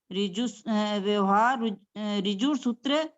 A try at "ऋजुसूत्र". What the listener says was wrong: रिजु नहीं, री नहीं है यहाँ पर, रजू है, रजू सूत्र। यहाँ पर ऊपर रेप है तो वर्रा का उच्चारण होगा। री का नहीं होगा।